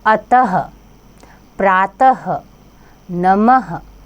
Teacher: दूसरा है विसर्ग। इसका उच्चारण आधे ह के समान होता है।